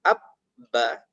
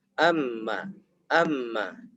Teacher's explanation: Hanya saja bedanya ketika ba itu ditekan. Abba. Tapi kalau mim hanya sekedar mengena saja, menempel.